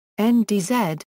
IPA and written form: ndz (ndz)